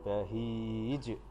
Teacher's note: membacanya harus dibaca memantul dengan lebih kuat atau lebih besar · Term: qolqolah kubro